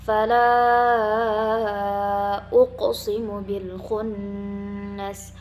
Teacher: Ada nun bertasydid digunakan selama 2 harokat.